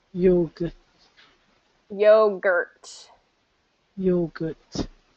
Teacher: so yo gert you're good get that t yogurt yogurt so the reason it's sounding like yoga is because you're not getting the strong r and you're not getting the ending t so you got to get those r and t at the